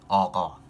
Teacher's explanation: not a sound that we, often use in English, which is GH, like qa, which comes from like the back of your mouth